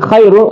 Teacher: di Khair ada Ro sebagai huruf tafhim ra tafhim dibaca tebal